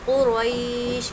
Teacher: رو پر زبر ہے اس لیے رو ہمیشہ پھول پڑی جائے گی